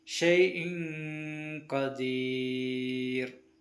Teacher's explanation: ആ നൂനിനെ വെളിവാക്കാതെ മറച്ചു വെച്ച് മണിപ്പിച്ച് കൊണ്ട് ഓതണം.